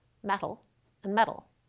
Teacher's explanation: even though they're spelled with 't' and 'd' they sound exactly the same when we pronounce them in ordinary speech